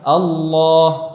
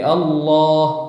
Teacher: tenggorokan Ini aku alisan disinilah tempat kendali tebal dan tipisnya huruf jadi apabila huruf lam tebal nanti kita naikkan pangkalnya